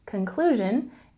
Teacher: with a stress on the second syllable in conclusion